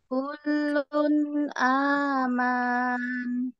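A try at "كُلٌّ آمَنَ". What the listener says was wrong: Jangan dibaca panjang, pendek ya. Aman, aman.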